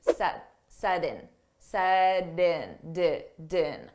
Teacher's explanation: So we can pronounce that T as a soft D